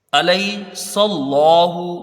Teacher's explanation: یا لین ہے، اس کو حروف مدہ سے کچھ کم پڑھیں گے